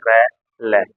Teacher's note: कहा जाता है दंत मूल या मसूड़ा क्यों क्यों क इनका उच्चारण स्थान जो होता है दंत मूल से होता है या मसूड़ा